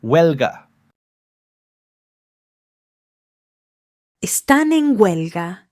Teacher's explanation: Huelga starts with a W sound.